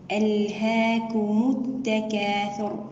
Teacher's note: التكاثر هنا الراء مفخمة لأنها ساكنة قبلها مضموم